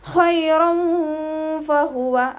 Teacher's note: തെൻവീനിന് ശേഷം ഇഖ്ഫാൻ്റെ ലെറ്റർ ആയിട്ടുള്ള ഫ വന്നു. തെൻവീനിലുള്ള നൂനിൻ്റെ സൗണ്ടിനെ മറച്ചു വെച്ചിട്ട് മണിച്ചോതി കൊടുക്കുക.